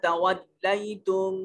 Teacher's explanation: ثم میم مشدد ہے، غنہ واجب ہوگا۔ تولیتم یا ساکن ہے، ما قبل مفتوح ہے، یا لین ہوگا